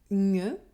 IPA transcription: ɲ